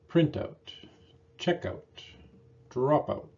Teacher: noun partners of these verbs have primary stress on the first word